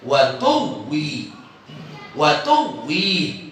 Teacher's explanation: maka wawu pertama dighamkan ke wawu yang kedua